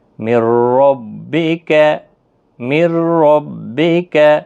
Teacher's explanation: اب را اور لام بغیر گناہ کے ادغام صرف ہوگا، گناہ نہیں ہوگا